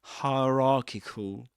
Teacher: Sometimes it happens that in this accent, these triphthongs, you know, 3 sounds made out of 3 vowel sounds, like as in fire, the vowel in the middle, the E in the middle, gets dropped, and you may hear something like hierarchical.